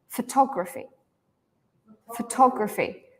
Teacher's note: in this one the fo is reduced right it's just an a sound